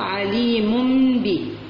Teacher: عليم بذاته، إذا هنا عندنا حكم، هذا الحكم يسمى الإقلاب، يعني نقلب نون الساكنة ميما